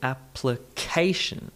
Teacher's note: emphasis on the third syllable